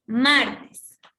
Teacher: aquí está la mayor fuerza de voz en mar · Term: palabra grave